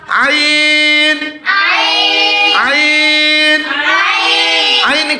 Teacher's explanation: কণ্ঠনালীর মধ্যখান থেকে আইন হরফটি উচ্চারিত হয়। আইন পড়ার সময় আওয়াজ নরম করে পড়বা।